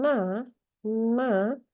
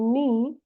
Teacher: kalau na itu n-nya lebih ke arah belakang ya, mendekati a. Nah, kalau ni ya lidahnya itu lebih ke arah depan gitu ya. Jadi posisi uh, artikulator itu tidak sama ya karena dia menyesuaikan dengan bunyi yang akan mengikutinya ya.